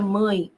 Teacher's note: perceba comigo como este E está representando o som do I. Se ele está representando o som do I, ele, nessa construção, vai ser a semivogal.